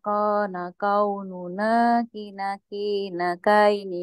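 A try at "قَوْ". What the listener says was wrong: awas bukan kaini, tapi koini. Koini.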